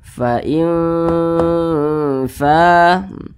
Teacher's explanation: Jadi cara membacanya itu disamarkan kemudian juga didengungkan. Akan tetapi dia kadar samar dan kadar dengungnya itu dia seimbang. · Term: ikhfa hakiki awsat